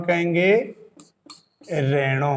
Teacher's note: 'H' ध्वनि को हटा दिया जाता है।